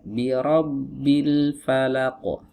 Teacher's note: Jadi ra di sini para ulama menyebutnya dengan istilah ra mufakhamah. Ra yang ditebalkan, yang diiringi dengan tafkhim. Ya, harus dibaca tebal.